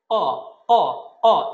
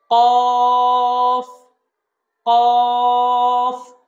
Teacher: কফ হরফটা আমরা 4 আলিফ টানবো। কফ হরফটা জিহ্বার গোড়া থেকে উচ্চারণ করতে হবে, ক, ক, ক, একটু হাই সাউন্ড হবে, কফ, কফ।